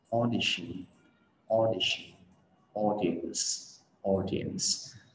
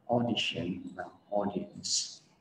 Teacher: Ở trong tiếng Anh thường là không có âm au, mà người ta chữ A, chữ U, A với U đi với nhau, người ta thường không có đọc là au, người ta thường đọc là âm o. Đó, để làm được cái âm o này mọi người tưởng tượng mình là con gà trống ok, mình sẽ gáy o.